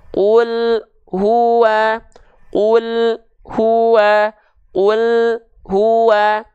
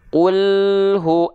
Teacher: jadi ketika dilafazkan yang insyaallah lebih tepat adalah seperti ini Qulhu antara AL dengan hu Masih ada sisa suara lam yang mengalir tanpa terjeda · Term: tawassut